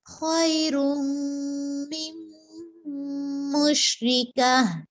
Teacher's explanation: گول تا کا یہ رول ہوتا ہے کہ اس کو ہم وقفے کی صورت میں ہائے ساکنہ میں بدل دیتے ہیں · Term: تائے مدورہ